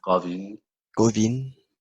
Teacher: the V is like a light V because it used to be a W